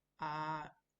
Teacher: the first tone which is the horizontal tone a just on the flat.